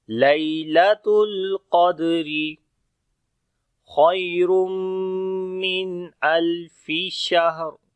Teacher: لیلۃ الیا لین ہے، سافٹ پڑھیں گے، تا کو باریک پڑھیں گے، قاف کو پھر موٹا پڑھیں گے.